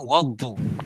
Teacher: alif lam bertemu dengan huruf syamsiah iaitu dhad, dibaca secara idgham, iaitu bermaksud masuk ke dalam huruf dhad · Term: alif lam syamsiah